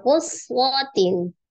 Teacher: Kemudian quswatin, ada huruf shad bertasdid dialirkan dulu, ada sifat as-safir mengalir nafas, kemudian mengalir suara ikhfa.